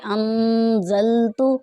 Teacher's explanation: یہ نون ساکن ہے، یہاں پر غنہ کر کے پڑھیں گے۔